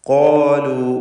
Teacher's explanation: ഖാഫിനും ദീർഘാക്ഷരമായ അലിഫിനും തഫ്ഖീമാണ്, ശ്രദ്ധിക്കുക.